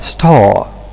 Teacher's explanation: Look, the word starring, there is the R here which is present, but in the word star alone, we tend to omit that R, star. So it's a case of apocope.